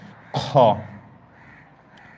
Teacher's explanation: মানে কণ্ঠনালের শেষ ভাগ থেকে উচ্চারণ হবে